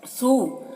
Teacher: یہاں پر واو مدہ ہے، ایک الف کے برابر، اسے کھینچیں گے